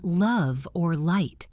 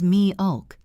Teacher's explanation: This sound is made deep in the throat almost like a vowel. Your tongue tip might not even touch the top of your mouth. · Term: dark L